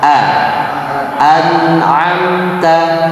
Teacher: Hati-hati di kata tersebut pada surat Al-Fatihah di ayat terakhir itu sering dibaca an'amta. Hamzahnya jadi huruf ain. Nah, dari sekarang dilatih. Pastikan itu hamzah dibaca dengan jelas.